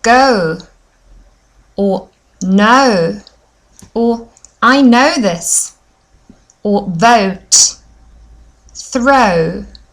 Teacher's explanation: I wanted to really focus on my lips and see how my lips become very round and a little bit closer than at the start of the sound